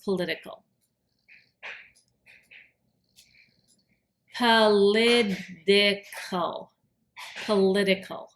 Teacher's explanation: political with that t sounds like a d